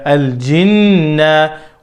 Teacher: I'll pronounce this noon with gunna with two counts. If the reciter stops on a word that ending with noon or meem mushaddada, the gunna will be pronounced.